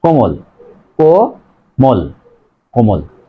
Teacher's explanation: কোমল, কয়কার ম ল, কোমল, এখানে দেখো মাঝে আছে ম, এই মর সাথে কোনো কার চিহ্ন নেই মানে অ, মাঝে অ আছে, তার আগের বর্ণ আছে ওকার, সে কারণেই এই মাঝের অ এর উচ্চারণ ও এর মতো হবে, তাহলে কয়কার ময়কার ল হস, কোমল, কোমল, কোমল।